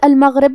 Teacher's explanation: غین کی ادائیگی حلق کے اوپر والے حصے سے ہے. غین حروف التفخیم میں سے بھی ہے تو ہم یہ حرف کو بھاری آواز میں پڑھیں گے.